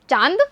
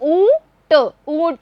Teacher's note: इसका उच्चारण हम करेंगे नाक और मुंह दोनों से। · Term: अनुनासिक